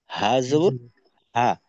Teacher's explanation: গলার মাঝে চাপ দেওয়ার প্রয়োজন নেই, খোলা ভাবে হা। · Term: গোল হা